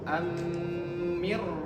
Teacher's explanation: Kalau nun sukun sakinah bertemu dengan ra bila gunah tidak ditahan. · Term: idgham bila guna